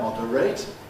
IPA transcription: ˈmɒdəreɪt